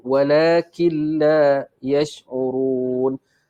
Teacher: di sini nun mati bercampur dengan lam, jadi hukum apa? Hukum idgham bila gunnah. Jadi bunyi dia killa, K-I-L-L-A.